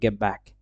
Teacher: Next গেট ব্যাক, তাহলে এটা হবে গেট ব্যাক, তাহলে টিটা বাদ দিয়ে এটাকে বি বানিয়ে দিলাম, গেট ব্যাক। দ্যাট মিনস এখানে টি in গেট changes into বি টু match the বাইলেবিয়াল বি in ব্যাক।